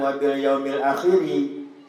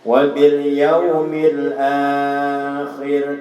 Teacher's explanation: Jangan wa bil yaumil akhiri. Jadi ujung kalimatnya, ujung hurufnya dimatikan.